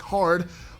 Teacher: American English has for the most part retain the language's rtosity, pronunciation of the R in words like hard, while British has for the most part dropped it.